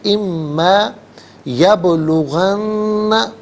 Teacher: نون ساکن کو ما کی میم کے ساتھ ملائیں گے، میم کی آواز کو غنّے کے ساتھ ادا کیا جائے گا، اور یہاں پر یرملون کا جو قاعدہ ہے وہ اپلائی ہوگا.